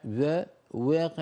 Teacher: يعني الواو هنا مخلوطة بالياء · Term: الواو مخلوطة بالياء